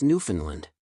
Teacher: Accent on the last syllable swallow the first d